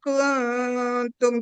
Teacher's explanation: Jadi di nun dan ka, nun dan ta, itu tuh ada sengaunya. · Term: Ikhfa